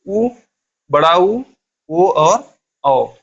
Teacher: उ और बड़ा उ, ओ और औ का उच्चारण करते समय हमारे होठ की आकृति गोल होती है, इसलिए वृत्त के समान होती है, इसलिए हम लोग इसे क्या कहते हैं, वृत्ताकार स्वर।